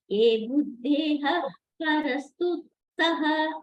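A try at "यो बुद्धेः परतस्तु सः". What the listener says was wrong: யோ புத்தேஹே, யோ மாதாஜி ஏ இல்ல, யோ புத்தேஹே பரஸ்து சஹ. புத்தேஹே பழைய திருப்பி நான் கரெக்ஷன் பண்ணிட்டு இருக்கேன்.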